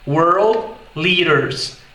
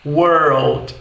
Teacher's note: você realmente consegue captar com facilidade aquela questão do R misturado com L no inglês americano